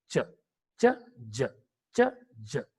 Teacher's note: a hissing kind of sound is created at the time of the production of these two sounds · ch is a voiceless palato-alveolar affricate consonant sound, and j is a voiced palato-alveolar affricate consonant sound. · there is a complete closure between the active articulator tongue and passive articulator palato-alveolar. That's why this sound is called palato-alveolar sound.